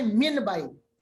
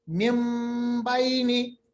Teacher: اور اکثر یہ ہوتا ہے جب یہاں آتا ہے مم بائنی, حالانکہ لکھا ہے من بائنی مگر نون ساکن کے بعد با آ رہا ہے تو یہاں من بائنی کے بجائے ہم میم کی آواز نکالتے ہیں مم بائنی, اس کو کہتے ہیں اقلاب